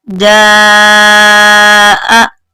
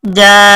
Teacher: یہ جو الف کے اوپر ہے یہ بڑی مد ہے، اس لیے اس کو 5 الف کے برابر لمبا کر کے پڑھیں گے، جا آ۔ اور وقف میں صرف جا پڑھیں گے، حمزہ ختم ہو جائے گا، وقفن جا۔ جیم زیر الف مد جی، حمزہ زبر آ، جی آ۔